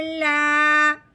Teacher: اب اپنے لام کو ایک الف کے برابر لمبا کرنا ہے الف سے پہلے زبر آنے کی وجہ سے